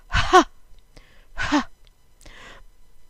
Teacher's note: It's considered a throat sound, and sometimes at the end of a word we'll have a hey with a dot in it, and there the dot is called mapik, and we say it with a puff of air.